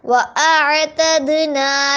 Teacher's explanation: وَأَعْتَدْنَا، دال جو ہے دال کے اوپر ساکن ہو رہا تو یہ دال پھر کلکلا ہوگا، یعنی آواز کو پلٹائے گا